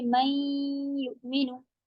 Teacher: नाकिस इसमें इदगाम होगा गुन्ना के साथ, यानी कि आप इसमें नून का गुन्ना बाकी रखेंगे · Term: इदगाम नाकिस